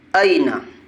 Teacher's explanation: نون کے اوپر زبر ہے، زبر کو جلدی پڑھے، تھوڑا بھی نہ کھینچے